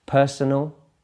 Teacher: the stress there is on the first syllable